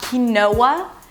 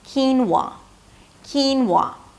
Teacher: And then it's a /w/ sound - 'whoa', and the /ah/ as in father - 'wah'.